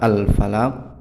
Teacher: Alif lamnya ini tetap terbaca karena ini adalah hukum bacaan alif lam qamariyah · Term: alif lam al-qamariyah